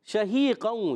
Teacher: تفشی یعنی منہ میں آواز کا پھیل جانا